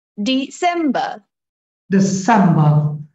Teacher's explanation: the second syllable is the prominent one · So D very quickly, sem prominent, loud, and ba very quickly.